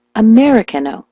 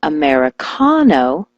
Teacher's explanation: switch the stress to the ka